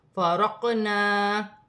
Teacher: قاف ساکن ہے، حرف قلقلہ میں سے ہے، قلقلہ کے ساتھ ادا کیا جائے گا اور اپنے سے پہلے حرف کی حرکت کے ساتھ ملا کر پڑھا جائے گا، جیسے فارقنا۔